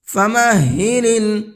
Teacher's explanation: ہا کو حلق سے سینے کی طرف سے نکال کر کے پڑھنا ہے